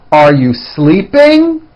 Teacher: Notice how my voice goes up at the end of a question like this. Are you sleeping?